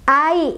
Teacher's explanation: Dibacanya dilunakan. Ai, nggak usah dipanjangin ya, kecuali kalau berhenti. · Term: mad lin